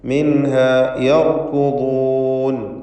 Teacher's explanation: ഈ പദത്തിൽ റാഇന് തഫ്ഖീം, അതുപോലെ ദ്വാദിനും തഫ്ഖീം നൽകേണ്ടതാണ്. ദ്വാദ് അതിൻ്റെ മഖ്റജിൽ നിന്ന് തന്നെ ഉച്ചരിക്കാൻ ശ്രദ്ധിക്കുക.